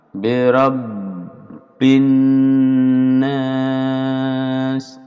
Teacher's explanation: Bi rabbin ini tasdid didobli lalu dipanjangkan 2 harokat.